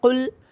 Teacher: قاف گلے سے نکال کر موٹا کر کے پڑھنا ہے